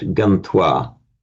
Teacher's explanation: So we get, for example, root gam, plus twa, you get gantwa. With it m changing to a n before a t